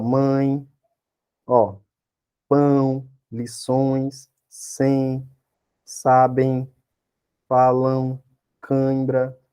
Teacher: só que parte sai pela boca parte sai pelo nariz é chamado ditongo nasal